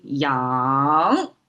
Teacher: yang is how Chinese pronounce it and it's a rising tone